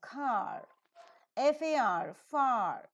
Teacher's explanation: you have a letter in the spelling but we don't pronounce it when it occurs in the word final position